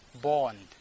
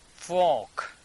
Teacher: The R is missing here, so we are not pronouncing R.